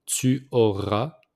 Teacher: we don't pronounce the S at the end.